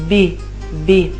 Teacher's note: Noi italiani, per pronunciare la B, chiudiamo completamente le labbra, B. Gli spagnoli, gli hispanohablantes, invece lasciano un'apertura attraverso cui esce aria, no?